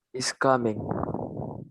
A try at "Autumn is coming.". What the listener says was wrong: Mana stresnya? Kok datar gitu? Ulangi. Coming-nya di mana? First or second? Is coming. Autumn is coming.